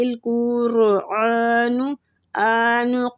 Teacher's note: قاف مستعلیہ پور پڑیں گے، اور را بھی قاف کی دمہ کی وجہ سے پور پڑی جائے گی